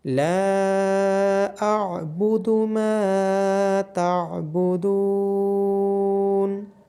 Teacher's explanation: میم کے بعد الف مدہ ہے، دال کے بعد واو مدہ ہے، لام کو، میم کو اور دال کو لمبا کیا جائے گا